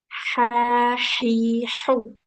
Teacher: H di tengah tenggorokan.